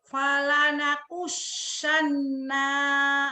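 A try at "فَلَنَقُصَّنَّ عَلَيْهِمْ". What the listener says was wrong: bukan nakusan, nakuson. Pendek. Falanakussonna alaihim. Falanakussonna alaihim. Segera. Itu buru-buru, nunnya tetap ditahan gunnah. Falanakussonna alaihim. Falanaqussanna alaihim bi'ilmi wa ma kunna ghaibin.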